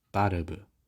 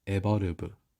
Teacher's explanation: is pronounced as tau tahu and fire is pronounced as huaya for the v sound there is no distinction with b